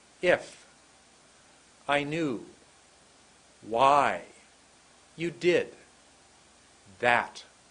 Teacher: the second is much longer about 80% the ratio is 2080 listen to how short I is and how short you is listen to how long new is and how long did is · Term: clumps